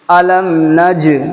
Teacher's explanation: جیم کے اندر قلقلہ ہوگا، ٹکر لگے گی